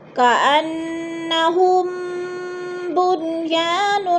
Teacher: ہم بنیان، میم ساکن کے بعد با آ رہا ہے تو ادھر اخفاء شفوی یعنی غنہ کریں گے، آواز کو ناک میں چھپا کر پڑھیں گے، جیسے کأنہم بنیان، بن پہ اظہار مطلق ہے، غنہ نہیں کریں گے